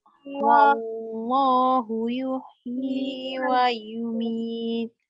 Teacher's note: Jadi ma'arif li sukun, tarik 4, matikan tak.